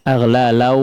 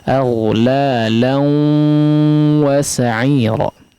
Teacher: Harus digunnahkan, artinya ada suara melewati rongga hidung.